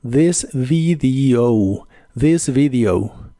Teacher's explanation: la V o V chica, como la conozcas, en inglés es labiodental y vibrante.